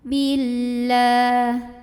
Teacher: Karena alif lamnya bertemu dengan huruf syamsiyah yaitu lam, maka alif lam ini kita lewat, tidak perlu dibaca ya. Dari bi langsung masukkan ke lam berikutnya. Billah, la mad asli atau mad tabi'i karena ada huruf yang barisnya fathah tegak, maka dibacanya panjang 2 harokat. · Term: alif lam syamsiyah